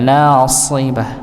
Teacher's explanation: Jadi dibaca dengan tebal, nasibah, nggih, huruf so ya, bukan huruf sin.